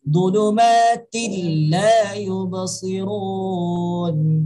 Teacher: Jadi bukan dibaca zulumatin la yubsirun. Harus masukkan bunyi tanwin ke dalam bunyi lam. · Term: idgham